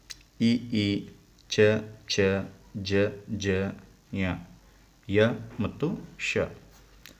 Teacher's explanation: ದವಡೆಯ ಸಹಾಯದಿಂದ ಹುಟ್ಟುವ ಅಕ್ಷರಗಳಿಗೆ ತಾಲವ್ಯ ಅಕ್ಷರಗಳು ಎನ್ನುವರು